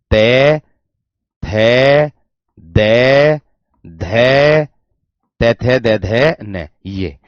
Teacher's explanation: जीभ की जो ये वाली आगे की नोक होगी ये आपके ऊपर के दांतों से टच हो रही होगी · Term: दंतीय व्यंजन